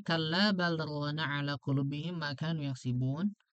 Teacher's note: Nah, kalau di riwayat Syu'bah lam yusakit ala lam wa adghimha fi ra wa amal fathar ra wal alif. Jadi di lam kepada ro dimasukkan, kemudian ro dengan alifnya menjadi imalah.